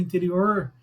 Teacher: Quem fala do interior como eu, puxa um pouco R